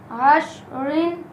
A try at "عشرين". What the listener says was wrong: جب ہم ملا کے پڑھیں گے تو را کے نیچے زیر ہے، را کو موٹا نہیں کریں گے. عشرین یہ غلط ہے. عشرین.